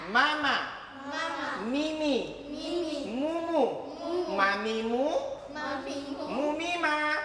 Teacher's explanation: Ya, ini juga dikenal dengan huruf syafatain. Huruf yang berkaitan dengan bibir, dua bibir.